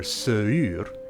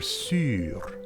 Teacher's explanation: where two vowels ooze into one, in Old French you were seür, well now you're [syːr]